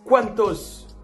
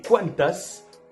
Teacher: il y a bien l'accent tonique sur le premier A pour les 4